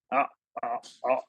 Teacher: Epiglottis को क्या किया हमने, पीछे की तरफ, वो आगे पीछे मूव होता है ना, पीछे की तरफ हमने पुश किया, गला तंग हो गया। जब तंग हो जाता है आवाज हमारी आ, आ, ऐसा होता है, जैसे कोई गला घोट रहा है ना, आवाज कैसी आती है, से ज्यादा नहीं आती ना, तो ये तंग हो जाता है।